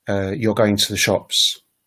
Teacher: the statement you're going to the shops is a sort of falling kind of intonation